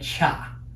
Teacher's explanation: If the y combines with the consonant t, then t plus y produces the cha and you get cha.